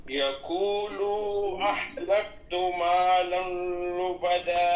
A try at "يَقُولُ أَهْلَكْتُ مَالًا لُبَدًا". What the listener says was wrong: یقولو، لام کو لمبا نہیں کرنا ہے یہاں، یقولو بس لام پیش لو، یقولو اس کو لمبا بالکل نہیں کرنا، ایک پیش بس ایک حرکت.